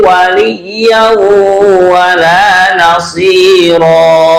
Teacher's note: Waliyau, jangan lupa waliyau, ya-nya bertasydid ya. Kemudian kita dengungkan karena tanwin bertemu wawu.